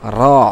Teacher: জিহ্বার আগার উল্টা পিঠ উপরের তালুর সঙ্গে লাগিয়ে র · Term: র জবর র